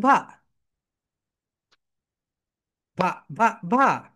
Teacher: তোমাদের উপরের দাঁত নিচের ঠোঁটের সঙ্গে টাচ করবে